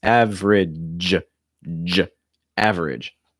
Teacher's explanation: that g sound is voiced